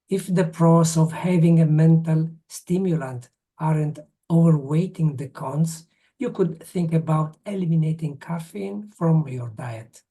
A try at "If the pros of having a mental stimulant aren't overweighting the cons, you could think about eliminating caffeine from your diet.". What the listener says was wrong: Yes, fantastic. Really, very, very good reading. So clear. It's fantastic. Absolutely fantastic.